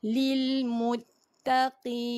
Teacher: qaf ni bila berbaris bawah tidaklah setebal seperti berbaris atas. Cumanya sama juga keluar di tekak ataupun naik pangkal lidah.